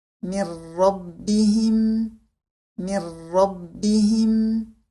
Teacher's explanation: un idgham sans nasillement car la lettre Nun Sakina est suivie de la lettre Ra, qui est une lettre de idgham sans nasillement.